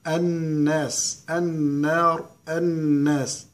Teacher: النون مشدده غنه بمقدار حركتين